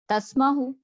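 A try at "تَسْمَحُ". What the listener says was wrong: तस्माहु, तुम इजाजत देती हो। आपको शुरू में पेश लगता पसंद है।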